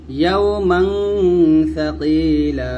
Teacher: ইয়াউমাং গুণ পাতলা, ইয়াউমাং সাকিলা, এরকম মাং গুণ আমরা পাতলা করে বলবো